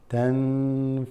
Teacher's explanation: Now, if you recall, noon sakina, if a noon doesn't have anything on it, sukoon, followed by fa, you're going to extend that slightly